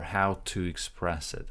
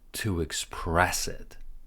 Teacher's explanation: we're linking to and with a little bit of a W